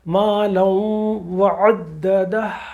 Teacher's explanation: ہونٹوں کو آگے لائیے، واو کا مخرج ہمارے ہونٹ ہیں، یہ دونوں زبر جا کے اوریجنل ہے مالن، تو وہ جا کے اس کی آواز واو میں ایک دم جا کے بلینڈ ہوگی اور اس کی آواز ختم ہو جائے گی 2 زبر کی، اور واو میں وہ مکس ہو جائے گا، مل جائے گا، بلینڈ ہو جائے گا.